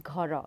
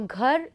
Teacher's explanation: in Odia this ends with a vowel, and in Hindi it ends with a consonant, the r sound, and in Odia it ends with the o sound, right.